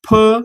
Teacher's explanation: ज्या वर्णांचा उच्चार करताना आपले ओठ एकमेकांना चिकटतात किंवा ओठांची हालचाल होते त्यांना म्हणायचं औष्ठ वर्ण